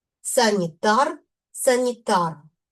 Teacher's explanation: В називному відмінку санітар наголос падає на суфікс ар. В родовому відмінку санітара наголос так само падає на суфікс ар. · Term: постійно наголошеними суфіксами